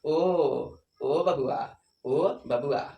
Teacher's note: तो ओ बोलेंगे तो ओ में जो है आपके जीभ का पिछला भाग उठ जाएगा